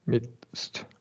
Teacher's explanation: midst and amidst turns the D into a stop T